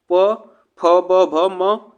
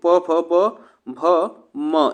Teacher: प फ ब भ म, यह जो होते हैं यह ओष्ठ से उच्चारण होने वाले होते हैं। तो प फ ब भ म यह जो होते हैं आपको ये भी याद रखना है, ठीक ना।